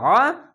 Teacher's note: এটি হবে হামজা যাবার আ, এটা সঠিক, আর এটি আইন যাবার আ, মোটা করে গলা চিপে পড়তে হবে